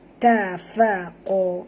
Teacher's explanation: Ta tak tebal, fa tak tebal, yang tebal ialah qaf ya.